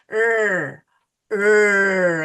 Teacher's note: It is not a stop sound, but it is a stretch sound.